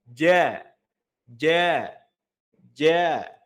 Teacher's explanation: Ya, jahar di sini ya suaranya udaranya tertahan. Ya, maka saat melafalkan huruf jim ya, tidak boleh ada hentakan udara keluar. Sama, cara mengeceknya taruh telapak tangannya di depan mulut, kalau ada hentakan udara yang keluar berarti masih belum tepat. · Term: jahr